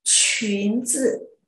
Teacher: khi phát âm từ chuyến zi, chúng ta phải bật hơi ra tay nhỉ